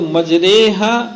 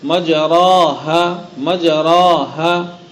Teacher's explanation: اور کسرہ اور نہ یا خالص پڑھی جائے گی، بلکہ فتحہ کسرے کی طرف اور الف یا کی طرف مائل کر کے پڑھا جائے گا، جس سے فتحہ کسرے مجہول کے مانند ہو جائے گا اور اس کے بعد یا مجہول ہوگی. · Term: امالہ